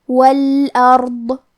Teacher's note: ضاد بھی حروف تفخیم میں سے ہے تو ہم یہ حرف کو بھاری آواز میں اور منہ پھلا کے پڑھیں گے